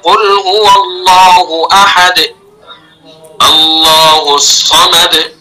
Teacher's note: दोनों होठों के गोल होने के साथ आवाज बारीक निकले और जेर में आवाज और होठों में पूरे झुकाव के साथ आवाज बारीक निकले। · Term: मारूफ